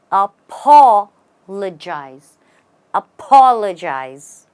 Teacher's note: Well, the right way to say it is apologize. You stress on the P-O, make it sound like a paw again and say apologize.